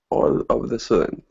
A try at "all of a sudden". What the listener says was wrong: Okay, not of the sudden, but of a sudden. All of a sudden.